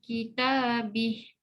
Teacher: Hi mad silah qasirah. Bila wakaf bih ada hamas pada ha.